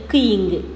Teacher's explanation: இந்த 2 மெய்களும் நாவினுடைய முதற்பகுதியும் அன்னத்தினுடைய அன்னம் மேலே இருக்குது பார்த்தீங்களா, அந்த அன்னத்தினுடைய அடிப்பகுதியை தொட்டு பொருந்துறதால் பிறக்குது